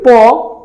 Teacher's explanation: বর্ণ বা ধ্বনি উচ্চারণ করলে দুই ঠোঁট স্পর্শ লাগে এজন্য এদেরকে উষ্ঠীয় বর্ণ বলা হয় উষ্ণ মানে মানে হচ্ছে ঠোঁটের